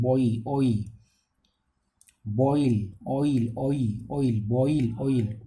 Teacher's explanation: the vowel glides begins from the positions of a back rounded vowel between open and half open towards the positions of a centralized front rounded vowel above half close